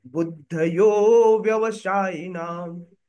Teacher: यहां पर यो है तो यो को हम थोड़ा लंबा लेकर जाएंगे